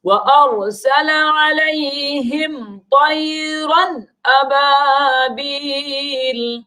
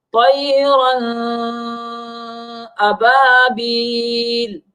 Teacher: طَيْرًا میں را کے اوپر تنوین ہے، یعنی 2 زبر، تو اس میں اخفاء نہیں کریں گے، چونکہ طَيْرًا میں را کے بعد جو اگلا حرف ہے وہ حمزہ، حروف حلقے میں سے حمزہ آ گیا، لہٰذا جب حروف حلقے آ جاوے تنوین کے بعد تو اس تنوین میں اخفاء یعنی ناک میں آواز نہیں لے جائیں گے بلکہ ظاہر کر کے پڑھیں گے